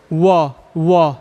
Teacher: क्या कह रहे? दंत ओष्ठ, दांत भी और ओंठ भी, दोनों का सहारा ले रहे हैं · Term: दंतोष्ठ